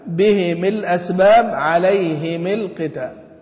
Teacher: قراءة أبي عمرو فيهما بكسر الميم بميم الجمع تبعا لكسر الهاء